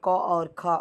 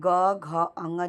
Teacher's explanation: क और ख अघोष हो जाएगा और ग, घ, ङ जो है वो सघोष या घोष हो जाएगा।